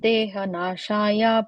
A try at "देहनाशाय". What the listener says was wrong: Again, the dehanashaya, when you're ending it, you're adding a subtle a, you're adding there. So dehanashaya, that's it, okay.